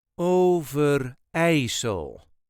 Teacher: there is a very slight emphasis on the third syllable